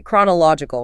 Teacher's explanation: The heavy beat falls on law. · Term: stress